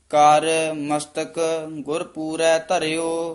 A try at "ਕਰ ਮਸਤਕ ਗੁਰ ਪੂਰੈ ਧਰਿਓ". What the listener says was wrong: ਇਹ ਪਾਠ ਨਾ ਕਰ ਮਸਤਕ ਇਕੱਠਾ ਨਹੀਂ ਕਹਿਣਾ, ਨਖੇਰ ਕੇ ਪੜਨਾ। ਕਰ ਮਸਤਕ ਗੁਰ ਪੂਰੈ ਧਰਿਓ।